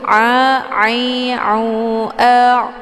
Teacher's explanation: Tumta la ta, ini ada ain sukun. Ain ini posisinya di tenggorokan bagian tengah